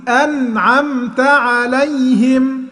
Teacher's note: أنعمت لازم تسكن النون وتسكن الميم، ما تقولش أنعمت، ما تعملش فيها قلقلة، تقول أنعمت عليهم.